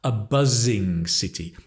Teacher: buzzing with a Z, a voiced Z, a buzzing city, like the buzz of the bee.